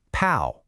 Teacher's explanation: And last, but not least, the fourth tone. This one is sharp, fast, and definite. It starts high and just drops.